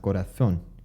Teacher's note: Corazón, which has a Z, has the theta sound